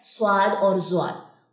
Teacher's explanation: وہ پاکستانی, ہم چونکہ عجمی ہیں, عربی نہیں ہے, یہ پاکستانی ایکسنٹ یا اردو ایکسنٹ میں آتا ہے سواد اور زواد